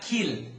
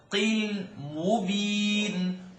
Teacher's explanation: it's a qaf. Coming from behind the uvula or the soft palate.